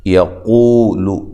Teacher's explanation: قو واو مدہ ہے، قاف کو موٹا کریں، لام کو باریک پڑھنا ہے، لمبا نہیں کرنا